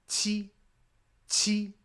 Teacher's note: Tongue against the back of your bottom teeth, very explosive.